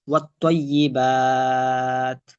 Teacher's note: মাদার হরফের পর হরফে অক্ফ করার কারণে একটু টান দিছি বেশি